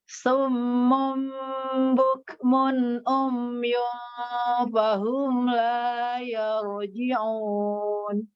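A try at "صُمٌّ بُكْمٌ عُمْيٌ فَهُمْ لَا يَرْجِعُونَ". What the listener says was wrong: Tapi mim tasydid pertama nggak dengung nih tadi. Jadi summum itu 2 kali langsung dengung.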